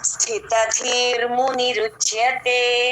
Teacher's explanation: స కింద త వత్తు మహాప్రాణం మళ్ళీ పక్కనే త అల్ప ప్రాణం మళ్ళీ పక్కన ధీ మహాప్రాణం